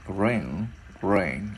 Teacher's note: Cái chữ R mình sẽ chui cái môi ra là rear. Và mình sẽ ngân cái chữ ngờ lên